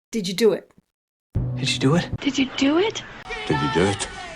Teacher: the D and the Y combine to sound like a J sound.